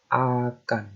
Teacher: Fonem ini namanya glottal stop. Ya. Muncul di dalam kerongkongan.